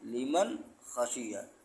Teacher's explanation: چونکہ نون ساکن کے بعد حروف حلقی آ گیا، اور جب نون ساکن کے بعد حروف حلقی آ جائے تو آواز ناک میں نہیں لے جاتے ہیں بلکہ نون کو ظاہر کر کے پڑھتے ہیں